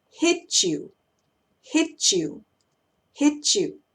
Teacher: cuando tengamos una palabra que termina con T y otra que empieza con Y, esa combinación va a sonar como una CH · Entonces suena como una CH cuando combino la T con la Y.